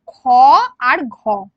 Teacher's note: এটাকে আমরা বলি মহাপ্রাণ বর্ণ কারণ এটা শ্বাসবায়ু বেশি লাগে